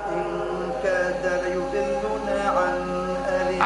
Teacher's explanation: أظهر النون عند حرف الحلق